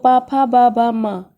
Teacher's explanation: ये ओस्ट से बोले जाते हैं दोनों ओस्ट से